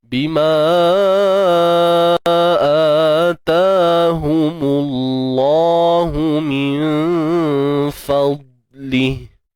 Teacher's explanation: Kalimah Allah ni kita kena tebalkan dia. Sebab apa kena tebalkan? Sebab sebelum dia berbaris depan